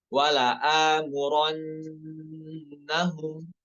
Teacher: Khusus pada kata wala amurannahum ya, terkait penulisan rosem di situ banyak yang terkecoh, malah dibaca wala amurannahum. Hamzanya malah dibaca pendek, harusnya 2 harokat.